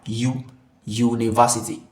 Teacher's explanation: Y O U is not. It does not begin with a vowel sound. Okay, this is a consonant sound because it's Y.